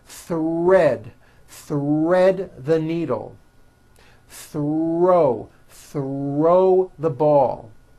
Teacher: the r is the strongest sound of the blend and is louder than the th